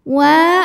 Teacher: karena ada Alif didahului harakat fathah maka wau ini panjang dua harakat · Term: mad thobii zahiri